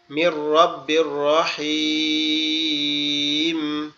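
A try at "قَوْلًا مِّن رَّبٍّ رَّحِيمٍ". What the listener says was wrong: রহিম রহিম হবে না রহিম রাহিম রাহিম রাহিম রহিম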